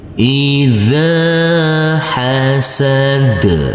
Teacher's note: huruf zal yang berfathah a bertemu dengan huruf alif yang tidak berharokat, maka huruf zal kita baca dengan panjang 2 harokat. Hasad, huruf dal yaitu huruf yang terakhir, karena kita berhenti di sini, kita wakaf di sini, maka huruf yang terakhir harus kita sukunkan.